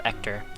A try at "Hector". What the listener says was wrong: That's pronounced Hector. Hector is like the Irish pronunciation of Hector. Yeah, you still have the H, sort of.